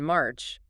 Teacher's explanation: the R after vowels, like in March, was fully pronounced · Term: rhoticity